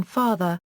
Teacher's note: The open back unrounded vowel as in father, its original, Latin and Greek, sound.